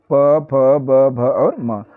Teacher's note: किससे होता है तो इनका उच्चारण स्थान होता है ओष्ठ देखिए इनके उच्चारण में हम ओष का सहारा ले रहे हैं